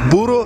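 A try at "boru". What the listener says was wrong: Nein, mit O, nicht mit U. Buru.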